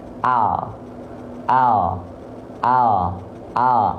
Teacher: yang disentuhkan ke langit-langit hanya ujung lidah ujung akhir lidahnya saja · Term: huruf L